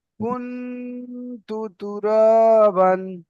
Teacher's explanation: নুন সাকিনের আওয়াজকে নাকে তুলে এক আলিফ পরিমাণ গুণনা করে পড়তে হবে